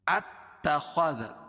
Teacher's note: دال کو باریک خا کو موٹا